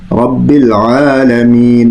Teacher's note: رب العالمین، عین جو ہے اس کو پھر مخرج سے پڑھیں گے، اس لیے کہ عین یہ بھی مڈل آف دا تھروٹ یعنی حلق کا جو مڈل کا حصہ ہے، حلق کے بیچ والا حصہ، وہاں سے عین ادا ہوتا ہے۔ تو اس کو بھی ہم اپنے مخرج سے پڑھ کر اس کو ادا کریں گے۔